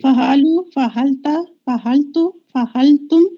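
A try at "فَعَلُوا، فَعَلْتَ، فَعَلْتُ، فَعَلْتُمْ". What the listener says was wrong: ہا نہیں ہے یہ، ہا نہیں ہے یہ، عین. عین ہا اور عین میں فرق ہے. فعل، فعلو، فعلتا ایسے.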